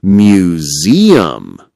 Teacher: In museum, the strong beat is also in the middle.